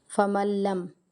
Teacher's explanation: نون کو نہیں پڑھنا، لام کے ساتھ ملانا ہے، ادغام بلا غنہ